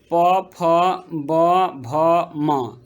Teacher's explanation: और नेक्स्ट है प वर्ग। प फ ब भ म, ये इसका उच्चारण करके आप देखिए ये ओठ से निकलते हैं